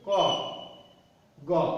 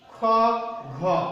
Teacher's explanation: ক, গ, এই ধ্বনি দুটো উচ্চারণের সময় আমাদের বাতাসে তেমন চাপ পড়ছে না, অর্থাৎ কণ্ঠনালী দিয়ে সহজে বাতাস বেরিয়ে আসছে।